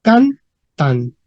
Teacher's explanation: Cantant. Y con P2 vemos que la T final desaparece. Entonces se transforma en cantan.